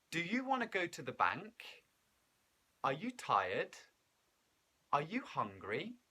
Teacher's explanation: are asking a yes or no question in english we use a rising intonation